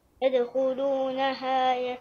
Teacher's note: قلقل الدال في يدخلونها